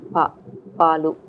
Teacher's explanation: we also say PA without aspiration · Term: voiceless unaspirated, voiceless unaspirated plosives